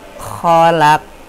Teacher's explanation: Khalaq masuk ke dalam hukum kolkolah, yaitu kolkolah sugro atau kecil, jadi tidak terlalu memantul